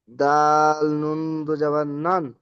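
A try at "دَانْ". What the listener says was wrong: নুন দুই জাবার নেই এখানে। দাল, নুন জাবার দান। আচ্ছা, আলিফটি আমি আগে বললাম। আলিফটি পড়তে পারেন, না পড়তে পারেন, অসুবিধা নেই। তো লেখার সময় কিন্তু লিখতে হবে। আপনি যখন পড়াগুলো লিখবেন তো লেখার সময় লিখতে হবে। পড়ার সময় আলিফ বাদ দিয়ে পড়বেন, বা ধরে পড়তে পারেন।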